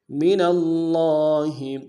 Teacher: نون کو لفظ اللہ کے لام کے ساتھ ملانا ہے، تشدید زور دیں گے